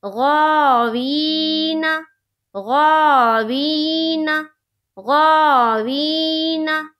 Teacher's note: غین کے اوپر کھڑا زبر ہے، کھڑا زبر برابر ہوتا ہے الف مدہ کے، کھڑا زبر کو ایک الف کے برابر کھینچ کر پڑھیں گے، جیسے غا، وی، یا ساکن سے پہلے زیر ہے، یا مدہ ہوگی، یا مدہ کو ایک الف کے برابر کھینچ کر پڑھیں گے، جیسے غاوی۔ نہ نون کے اوپر زبر کی حرکت ہے، زبر کو جلدی پڑھیں، تھوڑا بھی نہ کھینچیں · نہ نون کے اوپر زبر کی حرکت ہے، زبر کو جلدی پڑھیں، تھوڑا بھی نہ کھینچیں، جیسے غاوین، غاوین، غاوین۔ دیکھیے نا کو نہیں کھینچ رہے، غا کو کھینچنا ہے کیونکہ کھڑا زبر ہے